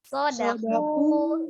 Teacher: Tapi kalau di Arab tidak, jadi bukan dipisah dibacanya sodaku bukan ya, tapi sodaku. Jadi ketika dalnya ini dia pendek, seolah dia menjadi satu kata dengan ku, tidak boleh terpisah.